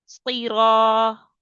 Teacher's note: صاد، را اور طا ان تینوں کو موٹا کر کے پڑھنا ہے